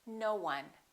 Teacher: We don't say no one, we link it, we put a little w in there, and we say no one.